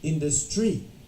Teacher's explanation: So the correct answer should be industry. The stress is on the in.